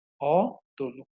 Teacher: মধ্য অ এর পরের ধ্বনিতে হ্রস্ব উকার থাকার কারণে এটা ওকার, মানে মধ্য অটা ওকার হয়ে যাচ্ছে।